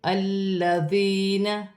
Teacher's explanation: یا ساکن سے پہلے زیر یا مدہ بن رہی ہے، ایک الف کی مقدار کھینچ کے پڑھا جائے گا